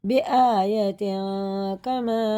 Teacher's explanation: اس نون کی آواز کو جو تنوین میں ہے ناک میں لے جا کے ایک الف کے برابر چھپا کے پڑھیں گے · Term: اخفا